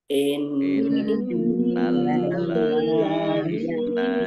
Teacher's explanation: nun tasdid ya dibaca gunah mendengung. Kemudian lamnya dibaca double, ada tasdidnya.